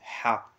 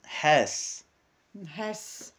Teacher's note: Il y a le H expiré dans la gorge d'une façon aiguë.